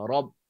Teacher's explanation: Okey, letak makhraj dia sama dengan lam tadi. Tegangkan pangkal lidah kita supaya dia tebal. Tafkhim dipanggil.